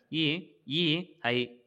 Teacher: ಕಂಠ ತಾಲು ಅಂದರೆ ಕಂಠ ಮತ್ತು ತಾಲು. ಕಂಠ ಮತ್ತು ದವಡೆಯ ಎರಡೂ ಸಹಾಯದಿಂದ ಉಚ್ಚಾರಣೆ ಆಗುವಂಥ ಅಕ್ಷರಗಳವು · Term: ಕಂಠಾಲು